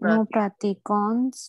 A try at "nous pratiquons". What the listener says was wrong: It is not nous pratiquons. No. S would not get pronounced. Nous pratiquons.